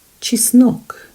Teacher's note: the stress falls on the second syllable there are only two syllables in this word